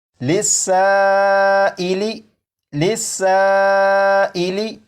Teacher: مد متصل ہوگا، اور اسے بھی 2 یا 2.5 الف کے برابر کھینچ کر پڑھیں گے